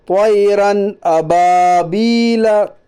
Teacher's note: یا ساکن سے پہلے زبر ہے، اس لیے یا لین ہوگا۔ یا لین کو نرم آواز کے ساتھ جلدی پڑھیے